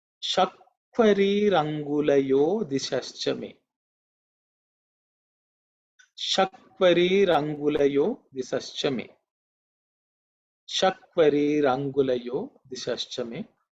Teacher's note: This is a longer mantra, but there are no consonants which are aspirated.